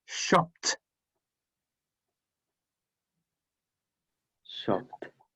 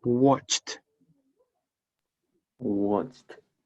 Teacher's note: The ED also can be pronounced T, okay, if the final sound of the verb is unvoiced.